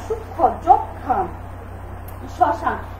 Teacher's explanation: তাই নিয়মটা হচ্ছে যুক্ত ব্যঞ্জন বর্ণের সংযুক্ত মফলার উচ্চারণ হয় না, বা যেসব ব্যঞ্জন বর্ণের সাথে মফলা যুক্ত থাকে সেই মফলার উচ্চারণ হয় না · যুক্ত ব্যঞ্জন বর্ণের সংযুক্ত মফলার উচ্চারণ হয় না। আমরা কিছু যুক্ত ব্যঞ্জন বর্ণ ব্যবহার করি, যেই ব্যঞ্জন বর্ণগুলোর মধ্যে আমরা মফলা দেই, সেই মফলার উচ্চারণ আমরা কখনই করি না।